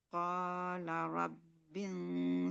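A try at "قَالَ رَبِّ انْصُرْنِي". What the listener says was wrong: Tebalin, tebalin. Sebab shod ini huruf apa, Mbak? Iya, isti'la. Masuk juga dia huruf itbaq. Nah, shod ini dia huruf isti'la, jadi bacanya harus tebal. Rabbil, gunnahnya udah tebal. Jangan rabbil surni. Nah, harus dari gunnahnya itu udah tebal. Qala rabbil surni.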